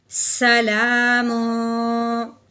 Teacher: ہاں جی، میم کے اوپر تنوین ہے، آگے دیکھا تو شین حروف ہلکی میں سے بھی نہیں ہے، لام اور رو میں سے بھی نہیں ہے، تو اس لیے ہم نے تنوین پہ اخفا کا گنہ کرنا ہے